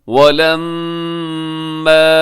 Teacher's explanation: یہاں میم مشدد ہے، یہاں غنہ کیجیے گا، الف مدہ ہے تھوڑا لمبا کیجیے گا۔